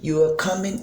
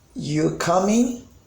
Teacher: at the end the pitch is rising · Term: question